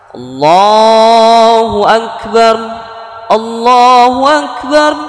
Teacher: setelah harokat fathah wa kemudian ada lafadz Allah maka lafadz Allahnya dibaca tebal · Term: tafkhim tebal